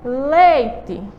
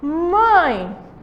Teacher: o som nasal além de passar pela cavidade bucal também passa pela nasal